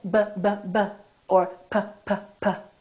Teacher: our lips right so if I say but Bubba or Papa I'm putting my lips together both my upper lip and my lower lip are working